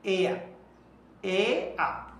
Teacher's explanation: যেমন আমরা এয়ার, in generally আমরা বাংলাদেশিরা এয়ার বলে থাকি। এই এয়ারটা ব্রিটিশ পদ্ধতিতে কিন্তু র এর উচ্চারণটা হয় না, এরা বলে এয়া, এ আ। আচ্ছা, আর আমেরিকানরা অবশ্য এয়ারই বলে।